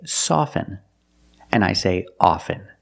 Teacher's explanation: with both words I don't pronounce a t